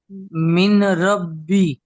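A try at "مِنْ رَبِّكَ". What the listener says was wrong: আপনি মিন বলছেন মির রব্বিক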